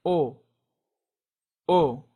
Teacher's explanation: In Spanish, you don't say the little U sound at the end, it's just O.